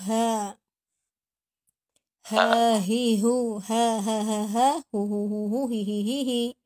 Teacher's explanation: makhrajul huruf ha adalah di al-khalqi ya. Makhraj al-khalqi ya. Tenggorokan. Tempatnya di bagian bawah. Makhrajnya di bagian bawah.